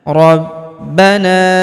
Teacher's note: huruf ba kita tahan dan kita tekan karena terdapat tanda tasdid di atasnya